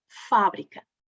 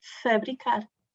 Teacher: Mas quando temos a palavra em posição átona, é fabricar. O A, que é aberto, passa a semifechado.